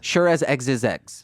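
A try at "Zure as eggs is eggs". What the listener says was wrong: No, it's a Z. There's a Z in sure.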